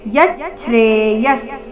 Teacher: ಯಚ್ಚ್ರೆ ಯ ನಂತರ ಅರ್ಧ ಚ ಇದೆ